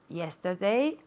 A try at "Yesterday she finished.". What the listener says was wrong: Okay, that D sound. Yesterday.